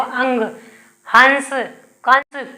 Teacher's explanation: अनुस्वार में क्या होती है, हवा जो है नाक से निकलती है। · जैसे हम अंग अंग बोल रहे हैं, तो अपने आप नाक से हवा आ रही है